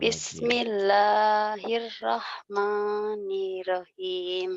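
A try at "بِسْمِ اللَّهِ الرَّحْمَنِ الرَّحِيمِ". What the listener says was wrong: Kurang tasdidnya, kurang nyamber. Bismillahirrahmanirrahim. Kurang nyamber. Samber.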